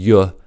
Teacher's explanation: place the tip of the tongue just behind the lower front teeth and raise the middle of the tongue towards the roof of the mouth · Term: palatal glide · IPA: /j/